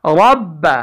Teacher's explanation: اس را پر زبر ہونے کی وجہ سے بھی اس کو ہم موٹا پڑھیں گے